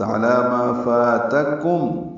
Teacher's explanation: علی یہ دیکھیں لام پر کھڑا زبر ہے، پچھلی آیت میں علی اللہ ملانے کی وجہ سے میں کھڑا زبر نہیں تھا. عین وسط حلق سے ادا ہوگا، لام پر کھڑا زبر ہے، 2 حرکات لمبا کریں گے.